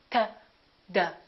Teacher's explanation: They also have the same point of articulation because in both of those cases, the tongue is touching directly behind the teeth.